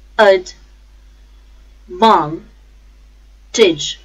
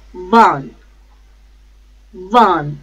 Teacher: The stress is on second syllable, van